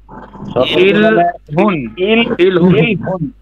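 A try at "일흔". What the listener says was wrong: ইরহুন। ইরহুন এই র উচ্চারণ হবে ইরহুন।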